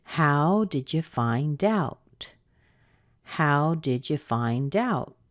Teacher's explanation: It's a WH question, and we know that because of the how. So when you have a WH question, you're not going to hear a rise at the end like you do with a yes-no question. You're going to hear a fall at the end.